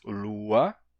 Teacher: É isso que fez com que palavras como lua perdessem a nasalidade. A gente diz lua, sem nasalidade nenhuma. A palavra era luna e nos deu lua.